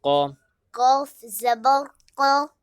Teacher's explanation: قاف کو موٹا کرنا ہے اور کھینچ کے نہیں پڑھیں گے۔